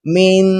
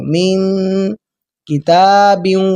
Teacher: اخفا کہتے ہیں ناک کے اندر آواز کو خفیہ کر لینا، چھپا لینا۔ دیکھیں من، ناک کے اندر آواز کو میں چھپا رہا ہوں